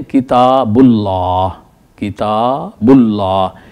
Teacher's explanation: آپ ذرا دیکھیے، مثلا ہم کہتے ہیں کتاب اللہ، کتاب اللہ، تو دیکھیے لفظ اللہ سے پہلے بے کے اوپر پیش ہے، تو ہم اس لفظ اللہ کو موٹا کر کے پڑھیں گے